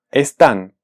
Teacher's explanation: podemos sentir que su sílaba tónica es la última